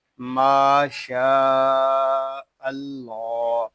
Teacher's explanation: اللہ پاک کا لام پر ہوگا کیونکہ اللہ پاک کے لام سے پہلے حرف پر زبر آ رہا ہے